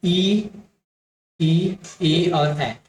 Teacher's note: आवृत्त मुखी का मतलब है होठ का गोलाकार नहीं होना।